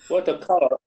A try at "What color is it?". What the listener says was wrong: Okay, can you try it again? What color is it? It's rising. What color is it? It should be rising. Your intonation or your tone should be rising. What color is it? Because we have question mark.